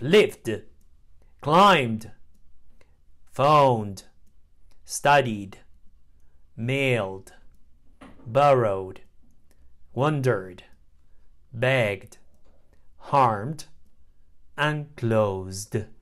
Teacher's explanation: D sound final e d is pronounced d after voiced sounds the D is Blended with the previous consonant and not pronounced as an extra syllable